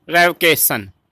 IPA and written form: rɛvəˈkeɪʃ(ə)n (Revocation)